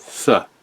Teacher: the Northumbrian th is unvoiced, so it's not the, but th.